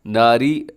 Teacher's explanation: اگر ملا کے پڑھیں گے تو ناری میں را باریک ہوگا، لیکن اگر وقف کریں گے تو را ساکن ہو جائے گی، اور جب بھی را ساکن ہوتی ہے تو اس سے پہلے والا حرف پھر دیکھتے ہیں، اگر اس کے اوپر زبر ہو تو را پر پڑی جاتی ہے، یہاں پر بھی را پر پڑی جائے گی۔